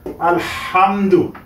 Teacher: গলার মধ্যখান থেকে উচ্চারণ করতে হয় এই দুটির মাখরাজ সেম হা এবং আইন